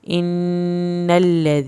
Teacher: अलिफ ज़ेर नून इन, नून ज़बर लम नल, इन्नल, लाम ज़बर ला, इन्नल्ला, ज़ाल ज़ेर यज़ी, नून ज़बर ना, इन्नल्लज़ीना। या साकिन की वजह से आपने इसको खींच के पढ़ना है